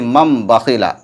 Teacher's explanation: تنوین یا نون ساکن کے بعد با آئے تو تنوین یا نون ساکن کو میم سے بدل کر غنہ اور اخفاء کے ساتھ پڑھیں گے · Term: اقلاب